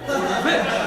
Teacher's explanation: The accent is on the last syllable